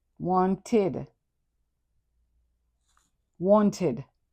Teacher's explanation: The final ed is pronounced id.